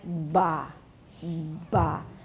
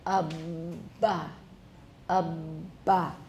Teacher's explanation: make sure that the voicing continues throughout the closure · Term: fully voiced plosive